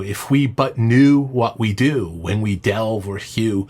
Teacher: it's so smooth and gentle, knit together by the recurring ooh sounds fitting the calm, serious, lamenting, slightly interrogative assertion.